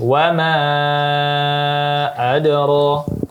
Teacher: karena wamanya mad jaiz maka dipanjangkan lagi.